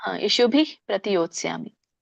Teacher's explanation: ವಿಸರ್ಗ ಉಚ್ಚಾರಣೆ ಮಾಡಬಾರದು ಸ್ವಲ್ಪ ಬರುತ್ತೆ ಮೈಲ್ಡ್ ಲೈಟ್ ಆಗಿ ಬರುತ್ತೆ ಹ ಬಟ್ ಪೂರ್ಣ ರೀತಿಯಾಗಿ ಬರೋದಿಲ್ಲ